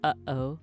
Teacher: like a bottle of water so that's a a glottal stop you make kind of like a uh sound like your throat is kind of closing as you say the sound